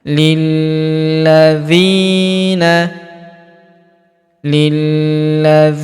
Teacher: Huruf la kita tahan dan kita tekan karena terdapat tanda tasdid di atasnya. Lilladzina lilladzina huruf dzi kita panjangkan dua harakat karena terdapat ya sukun di depannya.